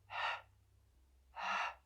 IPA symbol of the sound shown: h